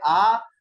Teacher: अर्धविवृत स्वर ए मुख द्वार के खुलने के आधार पर स्वर चार प्रकार के जो इस प्रकार है, विवृत्र, जिन स्वरों के उच्चारण में मुख द्वार पूरा खुलता है